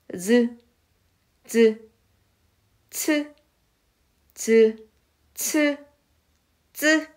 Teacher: 그래서 경구개음이라고 하는 거예요. 이때 혀의 앞부분을 센 입천장, 우리가 입천장 부분에서 좀 딱딱하고 뼈처럼 느껴지는 부분, 거기에 대해서 나는 소리를 센 입천장 소리, 다시 말해서 경구개음이라고 하는데 따라해보세요.